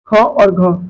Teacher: अ प्राण होते हैं महाप्राण इन वण के उचार से मुख से आपेक्षित अधिक वायु निर्गमन होती है और विस्फोट अधिक स्पष्ट होता है